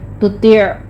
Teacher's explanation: تا کو آپ نے باریک رکھنا ہے، آگے طا کو پر رکھنا ہے، عین کی آواز وسط حلق میں جا کے رک جائے گی. تُطِعْ ایسے آپ نے سٹاپ کرنا ہے اس کو.